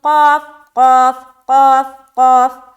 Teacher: اس کے بعد قتالو، قاف زیر قی، قاف زیر قی، قاف کو موٹا بولیں گے